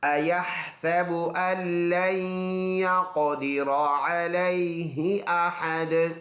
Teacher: وقف کریں گے دونوں پیش سائلنٹ ہو جائیں گے، دال میں قلقلہ ہوگا